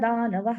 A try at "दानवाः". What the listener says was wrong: दानवाः दीर्घ आहे ना?